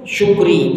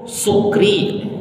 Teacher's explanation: Sa itu keluar desis angin di antara gigi-gigi. Kalau sya itu tengah lidah. Sya diikuti oleh mulut.